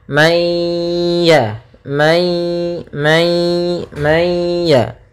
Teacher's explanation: Maka cara membacanya yaitu nunnya dimasukkan kepada huruf ya, ya, sehingga langsung kepada huruf ya dan ditahan suara gunnahnya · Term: idgham bi gunnah